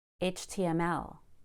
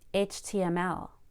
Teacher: Add a Y between the T and M for a smooth transition.